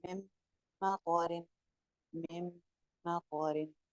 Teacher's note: इसी तरह आगे फिर यरमलून में से मीम आ रहा है, अब मीम पे इदगाम मुकम्मल है लेकिन गुन्ना के साथ है, पिछली मीम को अगली मीम से जोड़ रहे हैं